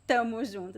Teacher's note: Instead of saying nós estamos, we say tamos. And also, you could also drop the S at the end